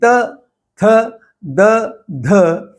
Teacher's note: अब आप देखेंगे कि त, थ, द, ध यह उच्चारण करते हुए जीभ पूर्णतः दांतों के साथ चिपकी हुई है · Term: त वर्ग